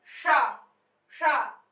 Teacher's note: जिह्वा को मूर्धा तक ले जाना चाहिए